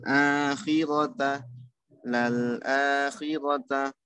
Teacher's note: yaitu hamzahnya dibaca panjang dua harakat